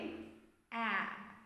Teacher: a lightly spread lips horizontal position horizontal position horizontal shape and it is near open front unrounded vowel